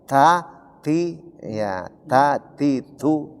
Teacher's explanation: Jadi penyebutan ti, huruf ta itu ada keluar napas.